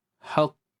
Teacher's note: kalau kita nak berhenti dia akan jadi qalqalahah